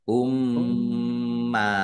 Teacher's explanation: Mim tasdid dibaca ghunah atau mendengung ditahan biar tampak dengungannya.